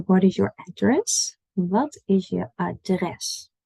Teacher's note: our emphasis is on dress not address